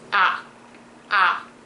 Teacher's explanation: where the third tone is a lower drop but don't be confused that it's shorter it's actually somewhat elongated a lot some it depends where you are some people stretch